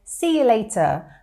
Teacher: So the you changes, it shortens, it's more of a y sound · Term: connected speech